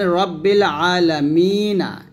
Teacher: যেমন রব্বিল আলামিনা, মিম ইয়াজের মি নুন যেমন না, মিনা মিতে আমরা 1 আলিফ টান দিয়ে নুন যেমন না বলছি